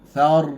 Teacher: Tafkhim, angkat dengan lidah tegang.